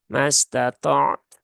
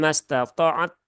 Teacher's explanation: syiddah taknya tunaikan, kemudian hamas taknya juga ditunaikan.